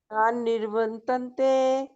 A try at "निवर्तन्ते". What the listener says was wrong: निर्व नहीं ना बोलेंगे, जो रफार वाला र है ना, वो नी के बाद नहीं आएगा, भ के बाद आएगा, निवर, निवर।